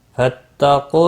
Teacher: قاف مستعلیہ ہے، پر پڑھا جائے گا